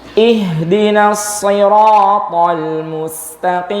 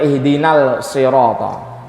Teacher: Jadi kalau alif lam ketemu sad, lamnya diidghamkan ke huruf sadnya.